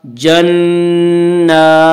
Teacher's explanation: جیم نون زبر جن نون کھڑا زبر نا جننا نون مشدد اس لیے غنہ بھی ہوگا